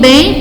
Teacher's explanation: o M tem som de I, gera o som de I, então esse grupo E com o M aqui constitui um ditongo decrescente nasal